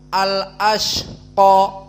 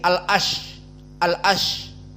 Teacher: rasakan keluar nafas karena dia hams